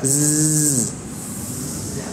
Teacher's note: Jadi kalau zai yang mengalir hanya suaranya, nafasnya tertahan.